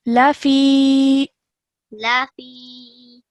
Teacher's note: the fi is stretched for 2 seconds because of the yamad